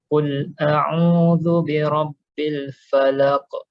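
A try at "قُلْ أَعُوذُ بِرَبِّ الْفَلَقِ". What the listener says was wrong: Falaq. Dia jangan bunyikan q, dia qa. Falaq.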